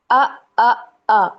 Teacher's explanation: اس کی مقدار 3 حرکت کے برابر ہے، یعنی ایک الف کے برابر ہے۔ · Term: حرف مدہ کی مقدار